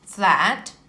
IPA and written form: flæt (flat)